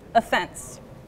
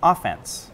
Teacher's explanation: she put the stress on the second syllable, offense. But if you want to talk about a sports team trying to score points, you might put the stress on the beginning and say offense. Offense is a kind of irregular word.